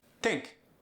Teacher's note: the TH becomes a T. Also, the I sound gets more of an E sound. The vowel substitution like we talked about earlier.